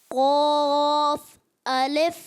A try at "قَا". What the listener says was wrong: اچھا قوف, ہونٹ ایسے گول نہیں کرنے, بغیر ہونٹ گول کیے آپ نے موٹا بھی کرنا ہے. کیسے؟ قاف الف.